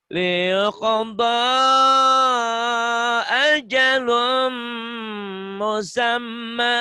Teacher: Ya, ini namanya alif nih ya, alif maksuroh. Ya, ya pengganti alif nih ya, walaupun fisiknya iya tapi tetap alif, jadi tetap panjang.